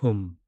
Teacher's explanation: 입술을 굳게 다물고 코로 내뿜는 흠. 소리는 내 안에 가득찬 금은 보화의 기운이 밖으로 세어나가지 않도록 단단한 자물쇠를 채우고 황금 방패를 두르는 강력한 봉인의 파동입니다.